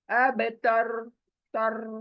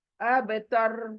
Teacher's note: ر کو نیچے نہیں گرانا زبان سے, بلکہ موٹا رکھنا ر کو. اب تر, تر, دیکھیں یہ موٹا ہے, اب تر. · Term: ر کو موٹا